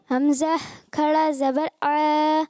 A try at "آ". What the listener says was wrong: آ نہیں بیٹا, اچھا آپ سے عین نکل رہا ہے, دیکھو حمزہ کو عین نہیں بنانا, حمزہ کھڑا زبر آ.